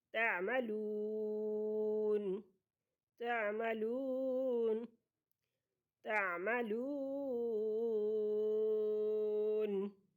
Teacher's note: تعملون، واو ساکن سے پہلے لفظ پر پیش ہے تو واو مدہ ہے اور ایک حرکت کی برابر یہ عام طور پر پڑھی جاتی ہے، لیکن جب وقف کریں گے یہاں پر بوجہ وقف اس نون کو ساکن کریں گے تو یہ واو مدہ جو ہے مد وقفی یا مد عارض کہلائے گی اور اس کی مقدار 2 الف 4 الف 6 الف تک ہے